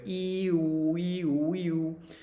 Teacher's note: And then going from the front to the back, you might feel how your tongue changes when you go ee-oo, ee-oo, ee-oo. Felt your tongue go back to say oo, and go forward to say e.